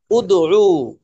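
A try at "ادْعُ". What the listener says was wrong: টান হবে না, উদউ। উদউ, উদউ।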